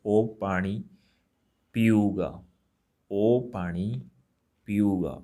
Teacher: when I use O, then there's no nasal sound